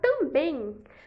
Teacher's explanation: é monossílaba porque só tem uma sílaba também a palavra também tem a última sílaba tônica então é uma oxítona